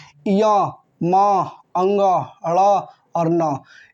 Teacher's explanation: नासिका। मतलब ये सभी वर्ड नाक से बोले जाते हैं।